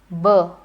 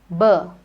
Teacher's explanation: It is also a bilabial because the two lips come together, b. A plosive, air comes out, b.